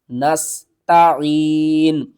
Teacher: کی صورت میں نون کو ساکن کر دیں گے نستعین نستعین سین کو آپ نے سیٹی کی آواز کے ساتھ پڑھنا